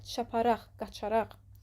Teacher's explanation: Sərf düzəldən araq şəkilçisində vurğu sona düşür.